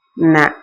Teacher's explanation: மேல்வாய் பல்லும் ஈரும், ஈரு பல்லினோட ஈரும் பொருந்தும் இடத்தில் நாவின் நுனியும் அதன் ஓரமும் நன்றாக பொருந்த நா பிறக்கும். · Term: தன்னகரம்